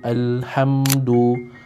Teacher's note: kita kena jelaskan bunyi mim tanpa dengung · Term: izhar syafawi